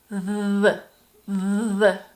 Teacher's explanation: Your mouth and your tongue are in the same position as for the unvoiced TH sound, but if you put your hand on your throat, you will feel vibration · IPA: ð